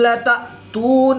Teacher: حمزہ ساکن ہے تو اس کو جھٹکا دے کر پڑھیں گے